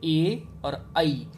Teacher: इन दोनों का उच्चारण स्थान कंठ भी होता है और तालु भी होता है, यानी कि इनका उच्चारण स्थान होता है कंठ तालु।